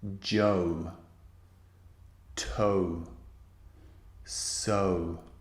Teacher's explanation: it's not one vowel as in Joe Joe it's two vowel sounds squeezed together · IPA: /əʊ/